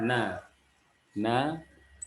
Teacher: huruf nun dia lebih pada ujung lidahnya